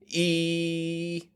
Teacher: your teeth are close together the back of your tongue is making pressure on your top teeth and the front of your tongue is kind of out of the way